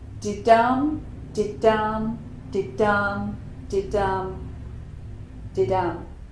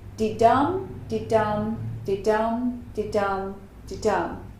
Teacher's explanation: a sentence where there are 10 beats and we have unstressed syllable, stressed syllable, did-dum, times 5. So this is iambic pentameter.